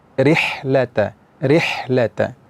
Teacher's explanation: pada huruf ha, yaitu ha yang berada di tengah tenggorokan, makhrajnya dari tengah tenggorokan. Di antara sifat huruf ha itu adalah hamas, mengalir nafas, mengalir angin ketika kita ucapkan.